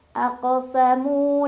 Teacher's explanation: Mu mad tabi'i karena ada waw sukun sebelumnya dhammah, dibaca panjang 2 harokat.